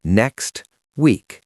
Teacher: When a word ends in a T or D and the next word starts with a consonant, we often just delete the T or D. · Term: elision